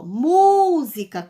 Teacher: Todas as proparoxítonas são acentuadas, tá bom? Então, na palavra música, ao pronunciar, tem uma sílaba mais intensa, que eu falo com mais força. A sílaba mu.